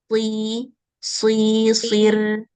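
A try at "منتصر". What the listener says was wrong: Enggak, ini tebal ra-nya.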